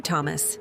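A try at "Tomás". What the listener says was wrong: Tomas. The emphasis is on the A. Tomas.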